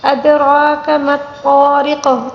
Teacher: ادو دال کے اوپر ساکن ہے، اس کو قلقلے کے ساتھ پڑھیں گے۔ را کے اوپر کھڑا زبر ہے، اس کو 1 الف کے برابر کھینچ کر پڑھنا ہوگا